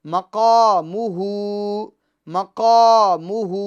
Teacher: مقام قاف یہ حروف مستعلیہ میں سے اس کو ہر حال میں ہمیں پور پڑھنا ہے، اور الف مدہ ہے تو اس کو ایک الف کی مقدار کھینچنا ہے، یا ہا پر الٹا پیش ہے تو الٹا پیش جو ہوتا ہے کھڑی حرکات میں، اور کھڑی حرکات ایک الف مدہ کے یہ قائم مقام ہوتی ہے، یعنی اس کو ایک الف کی مقدار ہمیں کھینچنا ہے۔